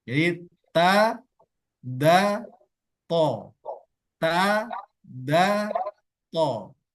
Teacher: Ujung lidah menyentuh gigi seri bagian atas yang pas tempat tumbuhnya gigi seri. Tempat tumbuhnya gigi seri itu antara dagingnya dan giginya, disitulah mengucapkan huruf ta.